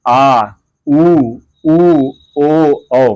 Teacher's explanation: पश्च स्वर कहते हैं पश्च, जिनके उच्चारण में जीव का पिछला भाग कार्य करता है, मतलब जीव पीछे से मतलब खींच का है।